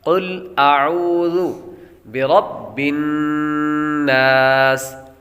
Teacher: سین حروف صفیریہ میں سے ہے تو اس لیے یہاں پر سیٹی کی آواز آئے گی